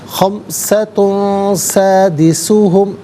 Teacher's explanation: وَيَقُولُونَ خَمْسَةٌ تا پر دو پیش کی تنوین ہے، اس کے بعد سین آ رہا ہے جو کہ حرف اخفا ہے، تو یہاں دو پیش کی تنوین کو اخفا کے ساتھ پڑھیں گے، یعنی ناک میں آواز لے جا کر گنگنانا۔